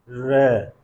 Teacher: क्योंकि जब हम इस ध्वनि का उच्चारण कर रहे हैं, र का उच्चारण कर रहे हैं, तो हमारे मुख के अंदर कंपन उत्पन्न हो रही है, और जब हम इसका उच्चारण करते हैं तो जीवा मुड़ के ऊपर जाती है, तो इसलिए लुंठित या प्रकंपित व्यंजन ध्वनि भी कहते हैं।